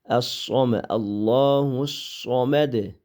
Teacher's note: Harf isti'lo bo'lganligi uchun qalin olamiz. Sodni chiqarganda lavni ishlatmaymiz.